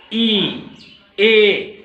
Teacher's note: तो होठों की स्थिति के आधार पे प्रसृत फैला हुआ ए फैल करके होठ आ जाते हैं, ई, आप देखेंगे ध्यान से, ए होठ क्या है, थोड़ा फैल रहे हैं, इसलिए प्रसृत है